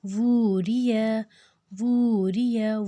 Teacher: وو کو ہم نے لمبا کیا 2 حرکت، اس میں کھڑی حرکت الٹا پیش ہے، اور باقی سب میں مد ہے۔